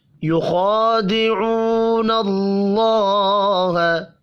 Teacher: یخادعون اللہ، خا کو پر پڑھیں گے، حروف مستعلیہ ہے، کھڑی زبر کی وجہ سے ایک الف کے برابر کھینچ کر بھی پڑھنا ہے۔ واو مدہ کو بھی ایک الف کے برابر کھینچ کر پڑھیں گے، اللہ کا نام زبر کی وجہ سے پر پڑا جائے گا۔